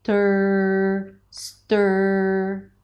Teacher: Now the tongue is up there for the held T, and then you pull the tongue in for the R. Stir, stir. All right, and then you round your lips a little bit, and you have that nice strong tension of the R sound.